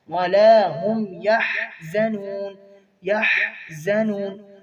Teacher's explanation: حا کو وسط حلق سے